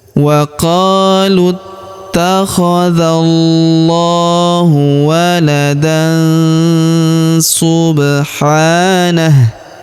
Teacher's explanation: Kemudian tanwin an huruf dan bertemu dengan huruf su sa ataupun su di sini ya. Maka tanwin annya melebur ke huruf su. Kita baca dengung dan samar. Dengungnya kita tahan dua sampai tiga harakat.